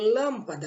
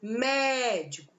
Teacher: o acento circunflexo, ele tem uma pronúncia fechada, ele tem um som mais fechado, enquanto que o acento agudo, ele tem uma pronúncia aberta